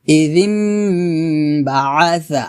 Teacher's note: ইযিম এখানে গুণনা হবে, ইকলাব গুণনা, দুটো মিলিয়ে গুণনা করবেন